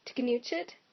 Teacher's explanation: Russian allows things like a T, a K, and an N to be in the onset of a syllable